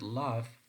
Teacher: the vocal cords vibrate when we make the consonants of v and this creates a buzzing sound exactly so when we say V so we feel a kind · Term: voice consonants